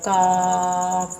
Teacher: قاف کی جگہ سے ذرا نیچے منہ کی جانب ہٹ کر اس سے کاف ادا ہوتا ہے۔ کاف کی ادائیگی میں کوے کا کوئی عمل دخل نہیں ہے۔